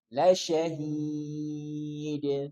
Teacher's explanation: mad arid li sukun karena di akhir ayat boleh dibaca 2, 4 atau 6 harokat